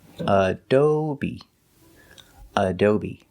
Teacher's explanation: And the last syllable is b, long E like green beans, adobe. The stress is on the second syllable